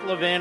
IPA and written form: ləˈvɪn (Levin)